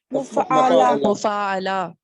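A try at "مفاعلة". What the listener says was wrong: मुफ़ाअला, अलिफ को वाज़े कीजिए।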